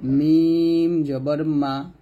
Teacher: মিমটা দুই ঠোঁটের শুকনো অংশ থেকে উচ্চারণ করি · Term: ঠোঁট থেকে